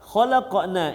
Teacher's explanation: kita wakaf ataupun kita berhenti pada kalimat ini maka kita baca dengan dua harakat saja